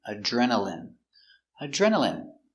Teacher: Remember, INE here is pronounced in.